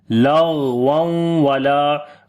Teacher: غین کو موٹا پڑھیں گے، حروف استعلاء میں سے ہے · غین کے اوپر صفت رخاوت بھی کریں گے، یعنی آواز کو کنٹینیو کریں